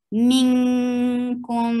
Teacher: Hiding the sound of noon and going towards the makhraj of kaf. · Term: ikhfa